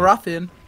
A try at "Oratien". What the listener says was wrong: kein TH.